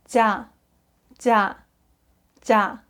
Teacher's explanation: your tongue kind of touches the roof of your mouth a little bit, so you have this kind of D sounding effect at the beginning of the syllable